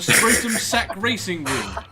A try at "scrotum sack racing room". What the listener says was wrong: You got the emphasis on the wrong word.